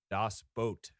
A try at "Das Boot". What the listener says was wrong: It's Das Boot. You say boat. It's not boot. It's not quite boat. It's like it's a little bit like boat. It's hard to say, but yes, mostly it's boat.